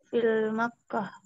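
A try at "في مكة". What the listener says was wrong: Naam, enggak boleh kayak alif lam ya, fi Makkah.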